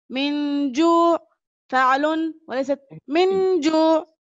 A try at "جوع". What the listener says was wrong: أنا لم أسمع العين.